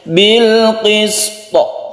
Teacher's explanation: maka cara membacanya itu tetap di qolqolahkan jadi membacanya itu bilqisto jadi qolqolahnya tetap dibunyikan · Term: qolqolah kubro